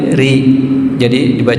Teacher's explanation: Contoh misalkan huruf ro ketika diberi harakat fathah dia akan tiba-tiba ro enggak ada ra gitu. Ketika diberi harakatnya kasrah menjadi riba dengan tipis